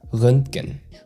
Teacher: the trick here is to soften it into a single flow. Röntgen. So the T in the middle is very subtle.